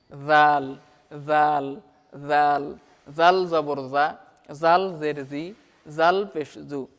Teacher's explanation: জাল জিহুবার আগা হতে নরমভাবে আদায় হবে।